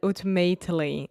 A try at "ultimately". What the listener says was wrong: I really just, the bad thing I heard was ooh at the beginning, and it should be ultimately. Yeah, just like culture, something like that.